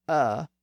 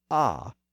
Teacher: the initial sound dropped from uh in the center of the mouth down to ah in the lower part of the mouth